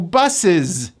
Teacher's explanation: The last letter is an S, but it's pronounced as a voiced Z.